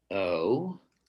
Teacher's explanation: the teen has a not so quiet rising intonation which is saying i'm questioning your right to say that so